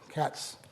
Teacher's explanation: cats, there's a hissing sound, but there's no voicing. So that's not a Z sound, it's an S sound. So that's not plus voiced, it's minus voiced.